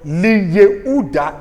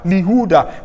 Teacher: Instead of Li Yehuda, you have Lihuda, because the yod loses its consonantal character